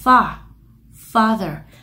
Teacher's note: Nó là âm o hạ hàm